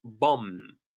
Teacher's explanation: We don't pronounce the last B.